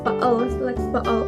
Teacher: Then, unlike the other sounds, the tongue, teeth, and lips are not involved in glottal sounds. The sound is made only by the vocal cords. Also, the airflow passes through the glottis. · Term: glottal stop